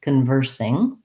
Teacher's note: And then, of course, we have just the sound sing at the end. We want to watch out that we use an I vowel and an NG sound with the back of the tongue lifting.